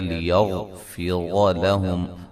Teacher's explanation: غین کو موٹا ادا کریں گے، را کو موٹا ادا کریں گے